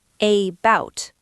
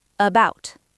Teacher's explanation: We don't say a-bout with a strong A, we say about. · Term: schwa